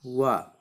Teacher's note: 7वां है वकारस्य दंतोष्ट। व को हम क्या हैं, दांत और ओष्ठ से बोलते हैं, इसलिए इन्हें दंतोष्ट वर्ण कहते हैं।